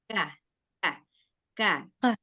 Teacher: Huruf kaf letaknya di depan pangkal lidah bertemu langit-langit. Nah, dia sama dengan kof, letaknya itu sama-sama pangkal lidah.